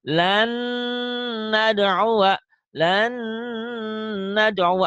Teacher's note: setelah diidghamkan ada ditahannya, ada dengungnya